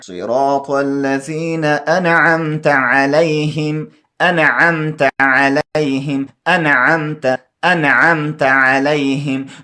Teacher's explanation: نون ساکنه به پټوئ نه یعنې اخفا به نه کوئ دا به ظاهروئ یعنې دې کې به اظهار کوئ